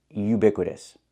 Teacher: Not oo, but u. We need the y sound, like yellow and yesterday.